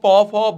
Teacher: প ফোর দুইটা ঠোঁট কিন্তু লাগছে